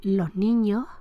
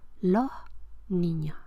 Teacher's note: no articula la S implosiva como tal S, pero sí como aspiración